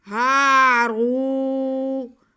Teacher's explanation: ہاں کی آواز کو ہم کھینچیں گے کیونکہ یہ الف مدہ ہو گیا۔ اگر را پہ پیش اور ساتھ میں واو ہے تو یہ واو ساکن ہے، اس کو بھی کھینچ کے پڑھیں گے۔